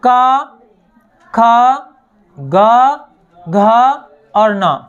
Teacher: का, खा, गा, घा और ना, इनका जो उच्चारण होता है वो कंठ से होता है